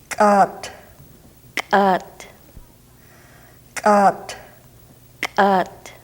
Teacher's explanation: do you hear that strong ejected quality it's like a pop